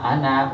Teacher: যে আনাটা পৃথক একটা শব্দ, সেই আনাতে ফির টান হবে না